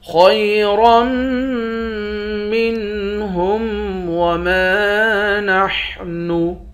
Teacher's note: خا اور را دونوں کو موٹا پڑھیں گے، را کو میم مشدد کے ساتھ ملا کر میم پر غنہ کریں گے۔